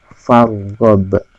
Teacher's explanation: Ba-nya itu juga termasuk qalqalah, jadi harus dipantulkan